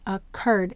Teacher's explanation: Where will we have the accent? Occurred. It's on the cur. So we will double the sound here.